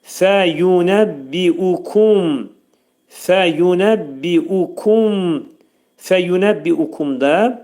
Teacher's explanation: Fəyunəbbiukum, fəyunəbbiukum, fəyunəbbiukumda fə incə samit, fə hərfinin məxrəci demək yuxarı üst dişlə alt dodağın arasında olacaq. Fəyu, yu burada incə samitdir.